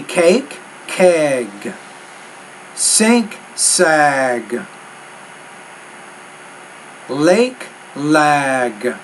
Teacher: when the voice consonant's at the end of the word, the vowel sound before it's a little longer. Conversely, when the voiceless consonants at the end of the word, the vowel sounds shorter.